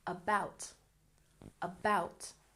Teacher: about has stress on the second syllable